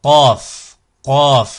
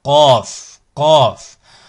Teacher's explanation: un son également emphatique, un son grave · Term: son emphatique